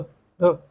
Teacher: उक्षिप्त, हिंदी में ड और ढ व्यंजन उक्षिप्त व्यंजन कहे जाते हैं। ड और ढ जिनके उच्चारण में जीभ ऊपर मूर्धा को स्पर्श करती है तुरंत नीचे गिर आती है, उक्षिप्त व्यंजन कहते हैं।